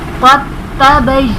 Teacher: دال کو چھوڑ دیں گے اور قاف کو تا کے ساتھ ملائیں گے. قد تبین یہاں پر دال کی ادائیگی نہیں ہوگی.